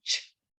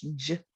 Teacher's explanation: the only difference between ch and j is that my voice box is on for j and it's off for ch.